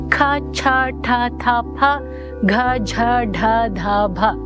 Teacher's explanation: in Mahaprana, you need to exert extra or maha breath